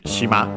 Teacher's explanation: accent on the last syllable